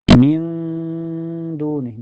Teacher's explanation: Billadzina min dunih, min setelahnya ada hukum ihfa hakiki ya, atau lebih lengkapnya ihfa akrob karena makhraj nun dengan dal berada berdekatan ya. Bacanya nun sukunnya disamarkan ke dal dan ditahan sampai terasa ke hidung ya.